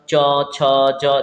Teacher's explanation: च छ ज देखिए आपकी जीभ जो है तालू को जाके टच होती है